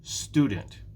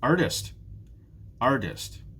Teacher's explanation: we see a pattern here in these first three jobs it's the first syllable that is stressed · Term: syllable stress